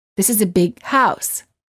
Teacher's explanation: you would hold a g sound of the word big